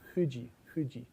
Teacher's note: In Japanese F, your teeth are not involved. It is only your lips. · in Japanese, that's not an F. It's a bilabial fricative.